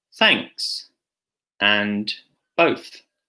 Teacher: your teeth like this notice that there is no voice here it's a voiceless sound meaning it's just air coming out there's no vibration in your vocal cords